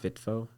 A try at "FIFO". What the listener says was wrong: There's no T. It's just FIFO. No, it doesn't count.